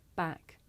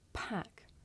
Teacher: with the voiceless sound there's a big puff of air you can feel it with your hands back back now let's